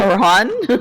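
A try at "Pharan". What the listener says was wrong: Fran. The PH makes an F sound.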